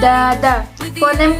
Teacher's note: D merupakan fonem konsonan yang bersifat dental letup hambatan dan bersuara